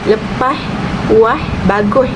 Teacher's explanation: Dan dalam dialek Kedah pula lepas, puas, bagus, iaitu perubahan fonem S kepada IH